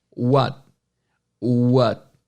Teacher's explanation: E você vê que não é uma vogal estendida, não é um tipo uá. Tem o T, tem o começo do T, a ponta da língua toca no céu da boca, mas o ar não sai. · Eles fazem a intenção do T, mas eles não soltam um som. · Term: T mudo